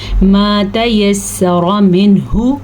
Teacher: نون پہ ظاہر کرنا ہے کیونکہ نون کے بعد، نون ساکن کے بعد ہا آیا ہوا ہے اور ہا حروف حلقی میں سے ہے، حروف حلقی 6 ہے۔ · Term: اظہار